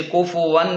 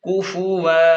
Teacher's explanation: کو فا پیش فو واو دو زبر ون کوفون دو زبر کو وقف کی حالت میں الف کے ساتھ بدل دیں گے ، جیسے کوفون سے کوفو لام پیش لو با زبر ب